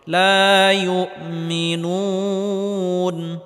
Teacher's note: মাদের হরফের পরের হরফে ওয়াকফ করলে 3 আলিফ পরিমাণ লম্বা করে টেনে পড়তে হবে